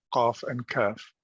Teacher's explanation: the back of the tongue touching the soft and the hard palate